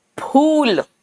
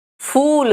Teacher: हिंदी का फ ये दोनों होठ चिपकते हैं हिंदी में। फ इंग्लिश में फ देख रहे हो फ यानी हवा निकल रहा है दोनों होठ के बीच में से चिपक नहीं रहा है